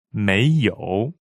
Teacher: may is second tone. Yo is a third tone.